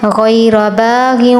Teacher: غین را ان دونوں پر تفخیم کرنی ہے